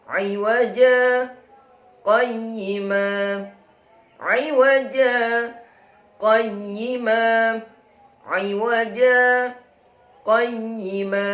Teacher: Sakta berhenti sejenak ya, tanpa bernafas. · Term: bacaan sakta